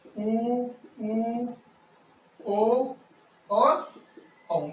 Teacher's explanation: जिन स्वरों का उच्चारण करते हुए होठ गोल होते हो उन्हें बोलते हैं वृत्ताकार